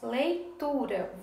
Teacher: a sílaba tu é a mais forte, ela é a penúltima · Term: paroxítona